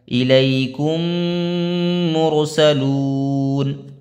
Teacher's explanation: یہاں میم کو میم سے ملا دیں گے، یعنی کہ ایک ہی میم پڑھی جائے گی، وہ کاف سیدھا میم میں مل جائے گا تو غنہ ہوگا یہاں پہ۔ · میم ساکن کے بعد میم آئے تو میم کو میم سے ملا کر غنہ کے ساتھ پڑھا جائے گا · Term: ادغام شفوی